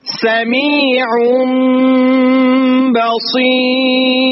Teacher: প্রথম নিয়ম হচ্ছে নুন সাকিন বা তানবিনের বামে বা থাকলে তখন সেটা নুন সাকিন বা তানবিনকে মিম দিয়ে পরিবর্তন করে গুণা করে পড়তে হয়। যেমন এখানে একটা জিনিস খেয়াল করবেন, এই বার উপরে এই বার উপরে যে ছোট মিমের মতো আছে, আমরা এই বা উচ্চারণ না করে মিম উচ্চারণ করব।